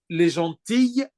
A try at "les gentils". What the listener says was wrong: Non, les gentils. Non, ça, on finit avec I. Les gentils.